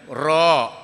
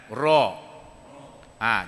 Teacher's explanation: Ra dia akan bergetar dua kali tuan-tuan.